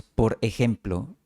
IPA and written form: poɾ e'xem.plo (por ejemplo)